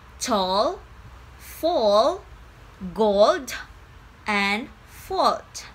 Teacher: when you make the back vowel, your tongue is already pulled back, so it's easier to make the dark L.